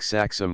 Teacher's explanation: and should be given the short sound in words like saxum the first syllable is long because X has the value of two consonants